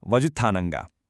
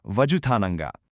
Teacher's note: you might have noticed that zh sound in vazhuthananga. It's kind of like a soft retroflex sound that's totally unique to Malayalam.